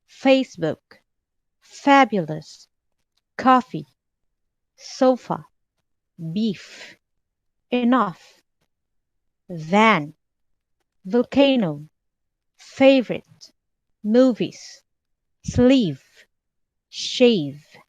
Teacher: you make a thin gap between your top teeth and the bottom lip and let the air pass through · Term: lip coolers